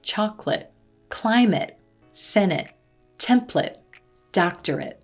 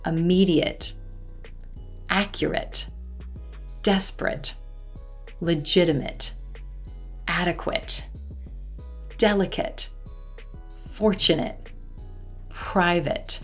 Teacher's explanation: instead of the A as in gray vowel sound, you're going to hear the I as in silver vowel sound in this word ending.